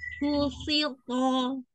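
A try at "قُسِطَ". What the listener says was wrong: Iya, to-nya ditebalkan lagi. Kushito. To. Nah, jangan to. Nah, diangkat diitbak. Kushito. To. Ukti tinggal belajar itbaknya. Kalau tebalnya sudah. Tapi kadang-kadang keluar itbaknya.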